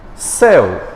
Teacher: 2 vogais em que o acento recaiu sobre a primeira, que é o E